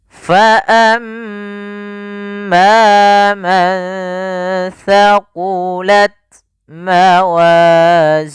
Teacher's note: Mantaqulat ada nun sukun bertemu tsa. Ini sama ketika bertemu dengan fa, yaitu caranya menyamarkannya ke huruf tsanya. Maka kita namakan dengan bacaan ikhfa.